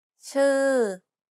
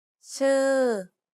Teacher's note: You want to make a U sound, but instead of rounding your lips, try spreading them instead. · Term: unrounded U